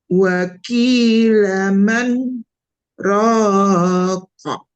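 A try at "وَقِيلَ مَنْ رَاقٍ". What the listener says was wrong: Ya, ki-nya masih kayak kap ya. Ki, waki, waki. Jangan waki. Waki itu kaf. Kalau waki, kalau kof, ki, ki, ki. Ki, digituin aja boleh. Waki, waki, laman.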